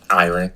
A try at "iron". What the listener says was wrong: Iron? Iron. You don't pronounce the R.